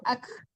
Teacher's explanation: Jadi udara aja yang berbunyi, jangan kafnya dipantulkan ya. Kalau kafnya dipantulkan jadi kalau dia, soalnya kaf kecil itu bukan huruf kalau yang kalau itu huruf kaf besar ya. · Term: hamasnya